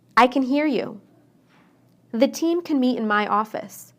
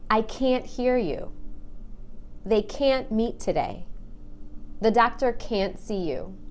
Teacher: when I say can't I stressed that a and make it really long · When I say can inside a sentence, I shorten the A. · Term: stressed a, the long A